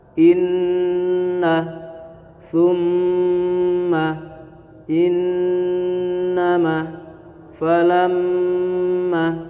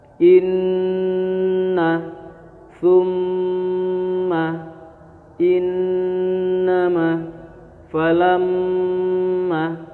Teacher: Setiap nun dan mim yang bertasydid. Dan cara bacanya harus dengan dengung. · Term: gunah musyaddadah